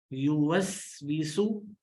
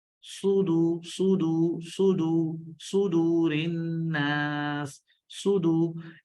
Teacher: सौद में भी सीटी है लेकिन ये मोटा है और ये बारीक है।